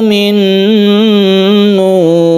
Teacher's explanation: Min nur kita panjangkan karena dia itu bersukun kalau kita wakafkan, karena nu ini adalah mad tabi'i bertemu dengan ro yang disukun maka disebut dengan mad arid lisukun. Panjangnya bisa sampai 3 alif.